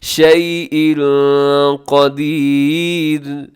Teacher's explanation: یہاں اخفا ہو رہا ہے، شیء ان کے نیچے تنوین ہے اور تنوین کے بعد قاف حروف اخفا میں شامل ہے، تو اب یہاں اخفا کیجیے گا، آواز کو ناک میں لے جائیے گا.